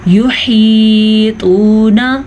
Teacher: ہا کے مخرج کا دھیان رکھیں گے तवा को पुर पढ़ेंगे और वाव मद्दा को हम खींच के पढ़ेंगे